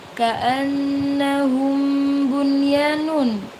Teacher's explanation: Ada nun bertasydid maka dibaca gunna. Dibaca gunna ya. Dibaca dengung.